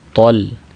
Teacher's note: یہاں پہ طا کو بھی تا پڑھ دیتے ہیں